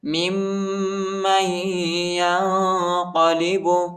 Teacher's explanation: میم کو دوسری میم کے ساتھ ملائیں گے اور غنہ کریں گے. اور دوسری میم کو یا کے ساتھ ملائیں گے، نون نہیں پڑھا جاتا، نون ساکنہ ہے.